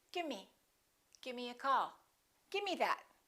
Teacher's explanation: instead of the v they just drop the v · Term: casual speech